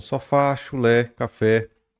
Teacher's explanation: o acento agudo ele vem aqui indicando um timbre aberto